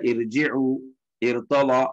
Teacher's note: இந்த ரா சுக்குன் பெற்று அதற்கு முன்னால் உள்ள எழுத்து கசர் வரும்போது அதை நாங்க மெல்லினமா சிம்பிளா தான் ஓதுவோம்